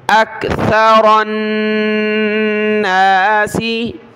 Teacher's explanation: रा को नून के साथ मिलाया, रा को मोटा करेंगे, कलरफुल है, नून पर गुन्ना होगा।